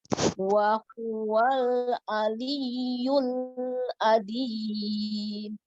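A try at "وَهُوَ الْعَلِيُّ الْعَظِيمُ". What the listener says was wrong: Nah, itu bukan adim, tapi azim. Cenderung lebih ringan, ada getarannya li. Tidak aldi, bukan begitu ya. Wa huwa aliyul azim. Azim.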